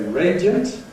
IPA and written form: ˈreɪdjənt (radiant)